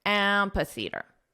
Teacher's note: the syllable stress is on the first syllable.